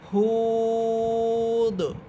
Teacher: যেহেতু শেষ হরফটা সাকিন হচ্ছে আর দাল কলকলা হরফ এখানে সাকিন হওয়ার কারণে কলকলা করে পড়তে হবে।